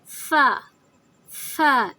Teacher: اس میں پھونک کی آواز، ہوا کی آواز شامل ہوتی ہے